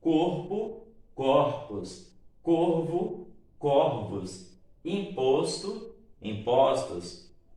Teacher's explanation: no caso da metafonia, está falando de palavras que, quando no singular, o O é fechado e no plural, o O é aberto